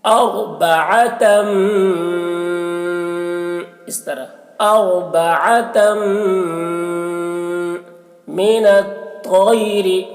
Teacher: تنوین کو میم سے ملا کر غنہ کے ساتھ پڑھیں گے ، اس کو ادغام ناقص کہتے ہیں۔ اربعتم، اس طرح اربعتم